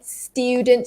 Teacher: instead of that like gliding sound, the stew, there's no glide here, so it's flat out student.